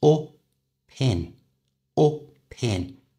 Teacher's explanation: in and we're going to join these two words together by moving the P the consonant sound from the end of up to the front of the vowel sound I at the beginning of in so it becomes o pin